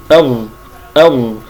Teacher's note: والظاء يخرج من طرف اللسان مع اصول الثنايا مع اطراف الثنايا العليا اظ اظ فهنا يجب ان يكون مكان اللسان عند النطق بالاخفاء